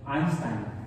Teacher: no suena EI como en español, sino que suena AI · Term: diptongo